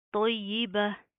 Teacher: وقف کی صورت میں گول تا گول ہاں میں تبدیل ہو جائے گی